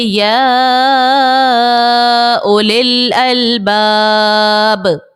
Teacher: طول بہتر, 6 حرکت کی مقدار کھینچنا, طول کرنا یہ بہتر تھا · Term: مد عارض